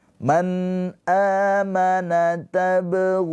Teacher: Panjang 2 harokat. Mad tabi'i, waw sukun sebelumnya harokatnya dhammah.